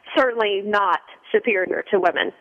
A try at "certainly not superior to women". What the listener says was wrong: No, the reason I say that, you kind of stressed it like you're saying that women are superior to men.